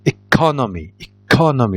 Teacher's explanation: ايكونومي لاحظوا ركزت على ك وهي اللي ضغطت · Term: ديستريس